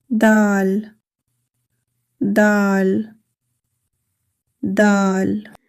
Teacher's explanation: This is dal. The tip of the tongue touches the roots of the upper front teeth.